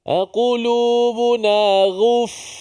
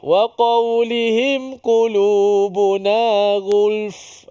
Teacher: bila dah gabung dua lam dengan fa itu, jangan tinggal salah satu. Jangan tinggal lam pula, nampak fa kat belakang, lam pula ditinggalkan.